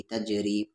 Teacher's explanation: جناتوں، تا کو جا میں تج، اور جیم ساکن ہے تو یہاں پر قلقلہ ہو جائے گا، تج را کے ساتھ یاری تجری۔